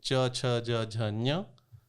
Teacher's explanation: आपकी जीव जो है तालु पे छू रही है, जो आपके मसूड़ों के थोड़ा सा ऊपर है।